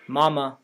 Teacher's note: In mama, both M's are non-palatalized.